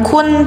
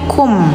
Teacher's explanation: Jadi mengganti suara tanwin ke m ya jadi bacanya jangan kun tapi kum ya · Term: iqlab